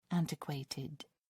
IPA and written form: ˈæntɪˌkweɪtɪd (antiquated)